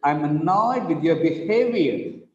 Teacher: With the word behavior, the second syllable is stressed.